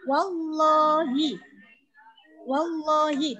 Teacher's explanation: Maka lam jalalah itu harus dibaca tafkhim atau tebal.